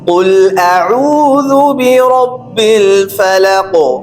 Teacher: را موٹا پڑھنا ہے، قوف پہ قلقلہ بھی ہوگا